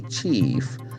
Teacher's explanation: Then IE combination, it will have the E, longer E, chief.